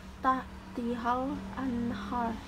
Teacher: Izhar halki harus dibaca dengan jelas, di mana suara nun mati dibuat jelas tanpa berdengung, apalagi samar-samar.